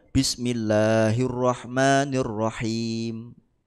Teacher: salah satu sifatnya itu kan takrir takrir itu menggetarkan lidah